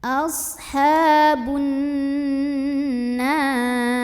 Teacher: Ashabun, ada gunnah musyaddadah karena ada nun yang bertasydid, maka cara membacanya didengungkan dulu, ditahan kurang lebih 2 harokat.